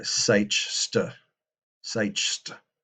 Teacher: the st sound and the ch sound go side by side, which is not something we do in modern English.